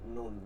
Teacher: জিহ্বার আগা তার বরাবর বা সামনে তালুর সঙ্গে লাগাইয়া